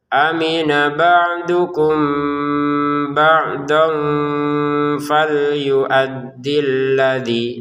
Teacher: Mim sukun bertemu ba dibaca dengan samar.